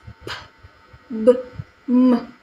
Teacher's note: These consonant sounds are produced by patting 2 lips together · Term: bilabial sounds